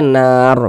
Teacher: di huruf ro kita teruskan Ika as huruf rnya dibaca tipis kalau berwakaf di huruf ro huruf rnya dibaca tebal